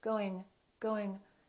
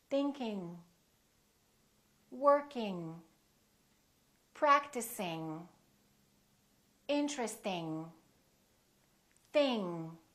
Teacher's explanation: can just release it tiny little bit going going tiny bit soft release or no release at all it's kind of a nasal sound